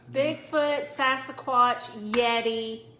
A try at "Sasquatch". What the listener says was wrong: Okay, you said Sasquatch the first time. I was like, there's no additional A in there. Just Sasquatch.